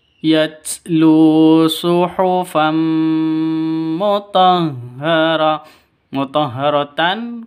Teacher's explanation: masuk ke mim disertai dengung dua ketukan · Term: idgham bighhunah, idgham bi gunnah